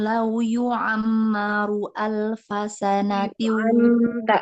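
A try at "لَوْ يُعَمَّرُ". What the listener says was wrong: Tekan lagi di ain. Lau yu'ammaru.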